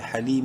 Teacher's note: ہا زبر ہا، لام یا زیر لی، یا مدہ ہے، لام کو ایک برابر لمبا کریں گے. حلیم، میم دو پیش من، حلیم وقفاً حلیم.